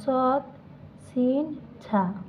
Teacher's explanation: জিহ্বার অগ্রভাগ সামনের উপরের 2 দাঁতের শেষ ভাগে লাগিয়ে উচ্চারিত হয়।